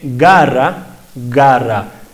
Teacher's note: la G de garra garra el aire está antes de la vocal está obstruido